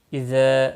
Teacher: ذا الف مدہ ہے، 1 الف کے برابر کھینچ کر پڑھیں گے